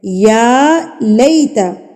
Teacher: یا کے اوپر کھڑی زبر ہے تو اس کو ہم نے ایک حرکت کے برابر کھینچ کے پڑھنا ہے